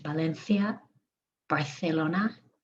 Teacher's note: the z and the ci or the ce is a th